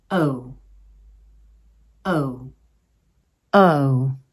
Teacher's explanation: start with your mouth in the /ə/ position meaning it is relaxed. As you release a long pulse of air, round and nearly close the mouth so that you finish in the /ʊ/ position. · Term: diphthong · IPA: /əʊ/